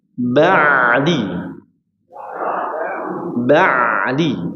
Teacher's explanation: huruf ain ditekan agar ada suara mengalirnya ya. Jadi cara mengalirkan huruf ain ya sedikit-sedikit dialirkan atau sebagian dialirkan suaranya huruf ain ini ya.